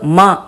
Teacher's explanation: ஜென்ரலா மகாரம் உச்சரிக்கும் போது ம அப்படிங்கிறத உதடு ஒட்டி ஓஷ்டமா சொல்லுவோம். அனுஸ்வரத்தை அப்படின்னு ஹம்மிங்கா உதடு ஒட்டாம நேசலா சொல்லணும்.